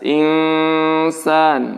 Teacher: nun mati bertemu sin, maka didengungkan. Dan nunnya dibaca samar, tidak jelas.